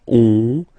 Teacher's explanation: when you get this ON combination, you get this nasal on, really in your nose